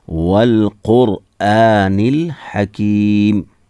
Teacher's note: यहाँ वाव को लाम के साथ मिलाएंगे और नून भी यहाँ पर लाम के साथ मिलाएंगे। बीच में जो ये अलिफ है ये पढ़ा नहीं जाता है।